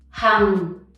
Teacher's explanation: This one is not difficult to pronounce, but you often mix up the tone, so remember to go down